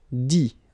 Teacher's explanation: You don't pronounce the final T.